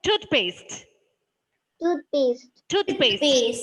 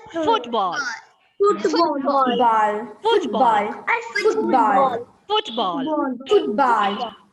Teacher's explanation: These words are called compound words, and the peculiarity is that the first syllable, the first part of the compound word is stressed.